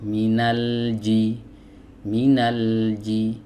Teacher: Nah, huruf lam ee dia memiliki sifat bainiah ya atau tawassut. Jadi saat kita mengucapkan huruf lam ini suaranya dialirkan sedikit atau setengah.